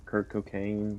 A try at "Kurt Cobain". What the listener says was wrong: No. Are you Kurt Cobain or Captain Kirk from Star Trek? Okay, his name is not Kirk. It's Kurt. It's K-U-R-T.